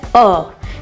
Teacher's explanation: मध्य स्वर में आता है अ, जिसे हम मध्य भाग से पढ़ते हैं।